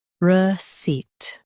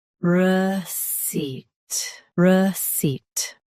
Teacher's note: Both US and UK have the same pronunciation of this word. Stress seat. Keep r soft and quick.